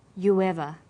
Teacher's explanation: Notice you ever. You ends with oo, a high back vowel, so it links with linking type 2, the W sound. It becomes you ever.